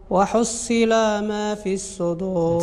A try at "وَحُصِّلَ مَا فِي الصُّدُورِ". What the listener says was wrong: وحصل. عيد، ما فيهاش المد. لا، ما فيهاش المد. وحصل ما في.